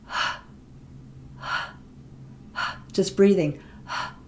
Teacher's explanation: your mouth is not really doing anything but what's happening is your air is coming through the glottis okay and we can make a whispery sound ah just breathing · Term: glottal fricative